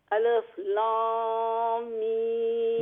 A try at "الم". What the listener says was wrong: نہیں غنہ نہیں کر رہی آپ. غنہ نہیں بالکل نہیں کر رہی. الف لام آپ یہ کہ لام نہیں لام